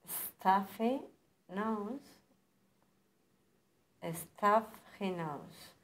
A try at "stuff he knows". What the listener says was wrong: And also the pause between stuff and he. And but, do you remember when we did the weak H?